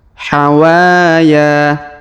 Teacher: hawaa huruf wa kita panjangkan dua harakat karena Alif di depannya huruf ya kita panjangkan dua harakat karena Alif di depannya